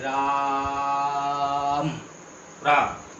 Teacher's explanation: जैसे अब इन अवग्रहों का प्रयोग है कि इस दीर्घ स्वर को, दीर्घ ध्वनि को 3 मात्रा के बराबर जोड़ दे के पढ़ना है। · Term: प्लुत ध्वनि